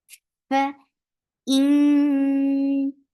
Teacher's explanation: Whenever you see fa, you're giving hums, and hums is a flow of breath.